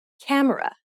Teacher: when you say camera in English, you put stress on ka and say it for longer than the other syllables of the word